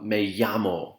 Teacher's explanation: and the double l a a so you have me yamo where the double l makes a y sound